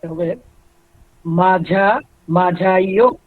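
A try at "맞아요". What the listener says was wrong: এখানে কিন্তু ঝ হবে না। আপনারা জিয়তের উচ্চারণ ঝ এবং জ কে কনফিউশনে পড়ে যাচ্ছেন। আপনাদেরকে কিন্তু আমি বারবার বলছিলাম, জিয়তের উচ্চারণ বরিগাহ্য, কিন্তু কোন জায়গায়? সে যখন শব্দের মাঝখানে বা শেষে বসবে, সেখানে কিন্তু বরিগাহ্য। আর প্রথমে বসলে বরিগাহ্য এবং ঝয়ের মাঝামাঝি এক জায়গায় সে বসবে।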